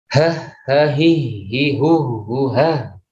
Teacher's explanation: Jadi kalau ha itu memang kita mengucapkan itu nafasnya juga harus kuat, okay. Karena udaranya banyak keluarnya. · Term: huruf ha